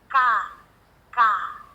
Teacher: pasti ada gerakan di Pangkal lidah nya